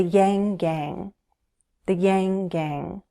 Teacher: The NG sound is a voiced sound, and it's similar to N